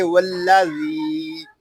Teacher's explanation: ذال یا زیر زی، والذی، یہاں ذال کو ہم ایک الف تک کھینچ کر پڑھیں گے کیونکہ یہاں پہ یا مدہ ہو رہا ہے، اس کو والذی اس طرح نہیں پڑھیں گے، اس کو پڑھیں گے والذی.